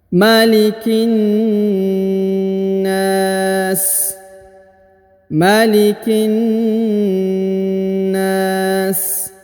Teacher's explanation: huruf ki langsung sambung masuk ke huruf na. Ditahan dan ditekan lalu dipanjangkan 2 harokat